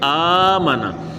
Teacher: آپ نے اچھی طرح سے دھیان رکھنا، جیسے یہ الفاظ اگر پڑھتے ہیں تو امانا نہیں بلکہ آمانا، الف کو کھینچنا ہے اور میم اور نون کو نہیں کھینچنا